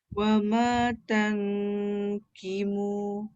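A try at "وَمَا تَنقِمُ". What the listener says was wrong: Jangan ki tau. Ki jadi kaf. Qi. Wa ma tanqimu.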